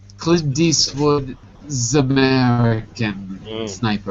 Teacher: The T passes to the E, the S passes to the A, and the T becomes a D. I'm American, so that's my accent. The S becomes a Z. So it becomes Deeswood and Zamerican.